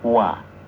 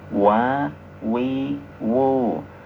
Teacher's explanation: Caranya dua bibir kita bentuk bulatan. Kita monyong dulu ya.